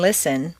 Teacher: you don't say the t and listen